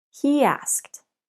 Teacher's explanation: he asked we link the sounds with Y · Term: linking two vowel sounds